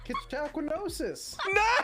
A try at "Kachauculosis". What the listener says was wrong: No, it doesn't have an N in it.